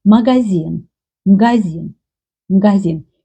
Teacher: You hear it sounds like they don't pronounce first vowel a.